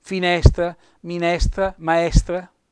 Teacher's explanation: queste parole che hanno questo accento sulla penultima sillaba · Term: parole piane